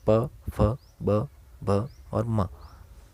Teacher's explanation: फिर है दंत्य, इसमें होता है त से न तक और वर्ष से भी कहते हैं, न है वो वर्ष से में आता है। फिर है ओष्ठ्य, इसमें होता है होठ से जो स्पर्श करके बोले जाते हैं